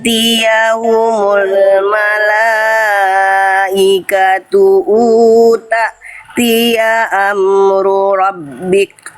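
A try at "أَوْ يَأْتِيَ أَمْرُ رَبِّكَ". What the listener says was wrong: Oke, bukan tia, au ya tia.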